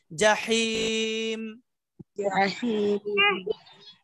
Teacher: চাপ দিতে হবে, কণ্ঠনালীর মাঝখানে চাপ দিতে হবে